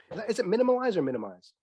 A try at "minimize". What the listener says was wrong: Minimize. You don't need to stick an extra syllable in there.